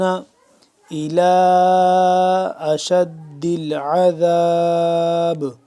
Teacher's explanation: لام کھڑا مد زبر لا، لمبا کریں گے 2 سے 3 الف کے برابر